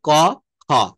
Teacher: একটা হচ্ছে অল্প প্রাণ, একটা হচ্ছে মহাপ্রাণ